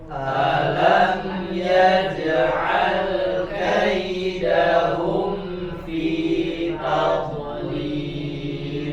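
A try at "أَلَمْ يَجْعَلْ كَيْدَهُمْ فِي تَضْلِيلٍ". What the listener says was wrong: Jangan dipantulkan, alirkan saja suaranya tanpa dilepas makhrajnya. Alam yaj'al kaidahum fi tadlil.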